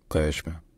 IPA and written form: ɢeʃm (Qeshm)